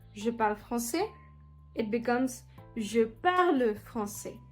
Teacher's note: The final syllables like E are pronounced more prominently.